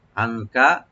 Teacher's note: ইয়াসুদ্দুনা আনকা, আনকা আইনটাকে right দিয়ে গলার মাঝখান দিয়ে যেন আসে, নুন সাকিন এখানে আমরা একফা করবো, একটু লাইট গুন্না করবো , আনকা, কাপটাকে ওপেন করে পড়বো আনকা,